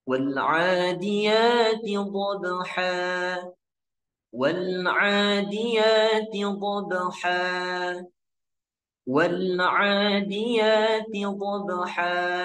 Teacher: di ayat pertama teman-teman kita menggunakan nada datar ya walaupun kelihatannya tinggi atau naik